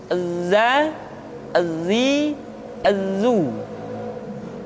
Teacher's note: huruf Z, suara kita mengalir, akan tetapi nafas tidak boleh mengalir.